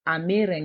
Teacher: And instead of contracting it here, because it's one word, so then the e in ame falls off, and it takes then the a in eren